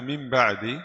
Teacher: Langkah yang pertama, kita ganti nun sukun ke mim. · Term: iqlab